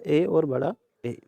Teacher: कंठ एवं तालु से उच्चारित होने वाले वर्ण